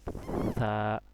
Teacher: এটা স, কিন্তু আরবিতে উচ্চারণ সই হবে, কিন্তু কি হবে, বাতাস বের হবে সা, জিহ্বার আগাটা সামনের দাঁতের আগার মধ্যে লাগবে সা। আপনার জিহ্বার আগাটা সামনের দুই দাঁতের আগার মধ্যে লাগাইবেন, লাগাই উচ্চারণ করবেন সা, হালকা করে বাতাস বের হবে।